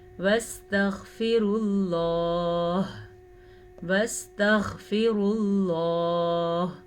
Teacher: غین کو واضح کرنا ہے اور را کو پر پڑھنا ہے کیونکہ را کے اوپر پیش ہے. لفظ اللہ کو پر پڑھنا ہے کیونکہ لفظ اللہ سے پیچھے بھی پیش ہے.